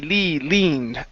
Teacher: Give me a long E sound instead of lend. It's E, leaned.